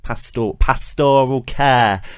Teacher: we're tending to see this shift now towards putting the stress on the second syllable